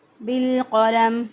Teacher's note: मीम जो है वो वक़फ़ की सूरत में साकिन हो जाएगा। सांस और आवाज़ को जब तोड़ेंगे तो मीम को आखिरी हरफ को साकिन करके पढ़ेंगे।